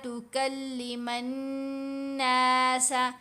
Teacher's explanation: میم کو ہم نے نون سے ملانا ہے ، الف اور لام دونوں حروف یہاں پر سائلنٹ ہیں، خاموش